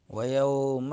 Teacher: واو ہونٹوں کو گول کرتے ہوئے ادا کرنا ہے، اور یوم میں واو لین ہوگا